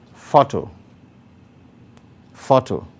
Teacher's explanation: Now, photo varies from all the other words there because it alone has two syllables. And because photo is a noun, the stress is on the first syllable. That is why the stroke, indicating the greater emphasis, is placed on the first syllable.